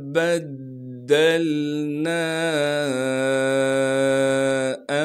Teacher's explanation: وَإِذَا شِئْنَا بَدَّلْنَا أَمْثَالَهُمْ، با کو دال سے ملائیں گے اس لیے کہ دال پر تشدید ہے، تشدید ہونے کی وجہ سے تھوڑا سا ٹھہراؤ رکھیں گے اور دال کو آگے لام ساکن سے ملائیں گے۔